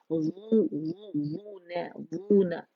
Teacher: हमने वा के साथ नून को मोटा नहीं करना